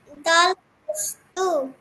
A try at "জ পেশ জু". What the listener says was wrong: এটা তো জ। ত জ। জ পেশ জু।